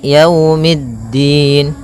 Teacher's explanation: Maliki, maliki yaumiddin. Pada lafal yau di sini ada bacaan lin, yaitu berupa fathah bertemu dengan huruf waw